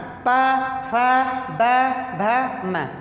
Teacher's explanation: प फ ब भ म में जब भी कोई शब्द उच्चरित कर रहे हैं प को, तो दोनों ओठ आपस में सट जा रहे हैं। तो इसका मतलब जो है यह ओष्ठ व्यंजन है।